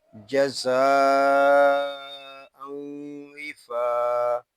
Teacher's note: فا الف زبر فا، یہاں فا کو ہم ایک الف تک کھینچ کر پڑھیں گے کیونکہ یہاں الف مدہ ہو رہا ہے